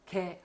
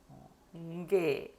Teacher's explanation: 개 하시고 날숨이 나오면 안 되고요. 게, 요 정도로 생각하시고 발음하시면 됩니다.